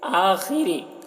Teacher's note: خا کو پور پڑھیں گے, را کو باریک پڑھیں گے